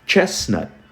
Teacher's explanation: Aqui você divide, você vai ter uma sílaba e outra sílaba, né? Esses T's, quando eles terminam a sílaba, eles poucos são pronunciados.